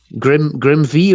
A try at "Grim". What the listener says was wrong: The V is silent, dude.